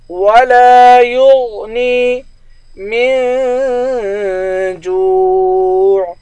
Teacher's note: یا کو غین کے ساتھ ملائیں گے، غین موٹے حروف میں سے ہے، غین کو موٹا پڑھیں گے